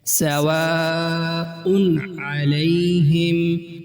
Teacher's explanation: حمزہ جس پر تنوین ہے اس کے بعد حرف حلقی ہے، لہٰذا تنوین واضح کر کے ادا کی جائے گی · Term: اظہار